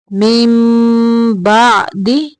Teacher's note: نون کو میم کے اندر ملائیں گے، یعنی یہ نون کو میم میں بدل کے پڑھیں گے